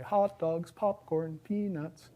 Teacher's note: if you're in the ballpark you say hot dogs popcorn peanuts there's this high low tune that you sing when you're doing things like that